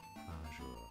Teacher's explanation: So the Z becomes like an SH sound